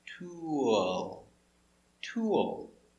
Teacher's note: when i go from the sound ooh to that oh the mouth opens a little bit